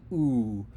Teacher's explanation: Round your lips into a very small circle, as if you're saying ooh, ooh. The back of your tongue should be high, and the tip of your tongue should be touching the roof of your mouth behind your front teeth.